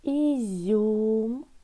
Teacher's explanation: в слові ізюм буковка Ю позначає один звук У і пом'якшує попередній приголосний